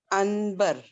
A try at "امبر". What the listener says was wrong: ان نہیں پڑھیں گے، وہاں کیا ہے دیکھیے وہ جی نون غنہ سے میم کی آواز نکلتی ہے.